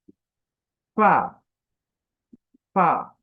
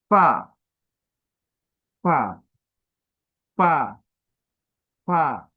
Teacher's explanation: সামনের উপরের দাঁত, নিচের ঠোঁটের পেট, বাতাস চালু, মুখে হাসি ভরে।